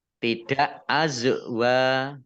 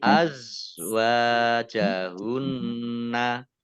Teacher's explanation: za sukun itu bukan kolkolah ya. Jadi tidak dimantulkan.